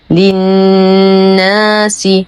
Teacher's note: نشد النون بغنى أكمل ما تكون ونتم كسرة السين